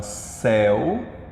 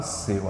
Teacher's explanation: substantivo veja céu eu digo pronuncio de fonada aberta seu fechado é a diferença de um ditongo aberto para um ditongo fechado